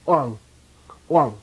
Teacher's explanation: After the prefix letter ta, pa changes to wa for no reason in the world.